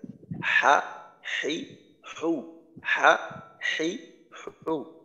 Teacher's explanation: এখানে নরম বলতে যে হলকের ওইখানের হলকের এক পাশ অপর পাশের সাথে শক্তভাবে লাগবে না, ওইখানে কিছুটা শিথিলতা থাকবে।